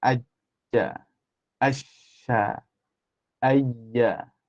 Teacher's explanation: maka semua itu adalah menggunakan Tengah lidah